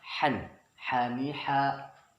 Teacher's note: Apabila ada tanwin bertemu dengan huruf ha, maka dia dibaca jelas, tidak boleh kita mendengungkannya di sini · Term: izhar halaknya